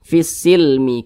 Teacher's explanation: huruf lamnya ini diidghamkan jadi huruf lamnya ini dia tidak dibaca langsung masuk ke huruf yang di depannya nanti langsung masuk ke huruf Sin ini begitu fisilmi Kaah kemudian